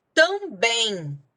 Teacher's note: sílaba tônica é o bem, né, terminou em em, assim como o parabéns, que termina em ens, e também leva acento.